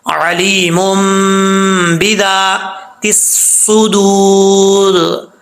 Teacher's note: جب را کے اوپر وقف کریں گے تو را ساکن ہو جائے گا